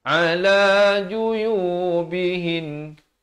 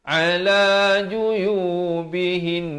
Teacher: Nun sabdu, kalau kita waqaf padanya, dia tetap dua harakat.